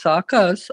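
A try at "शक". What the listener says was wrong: It's not a saka, it is a saka. You put too much emphasis on the first syllable.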